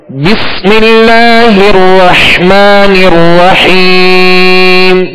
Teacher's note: را جو مشدد ہے اس کو بھی دوہرا پڑھیں گے، اور حا کو واضح پڑھیں گے۔